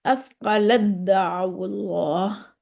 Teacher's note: تا کا دال میں اثقلت دعوا اللہ، تا نہیں پڑھیں گے، دال پڑھیں گے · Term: ادغام تام